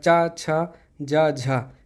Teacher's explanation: ये हैं तालव्य, मतलब ये तालु से बोली जाती है।